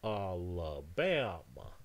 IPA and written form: ˌæləˈbæmə (Alabama)